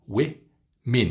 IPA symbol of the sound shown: ɪ